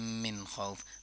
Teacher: اظہار ہو رہا ہے کیونکہ نون ساکن کے بعد خا ہے اور خا ایک گلے سے ادا ہونے والا حرف ہے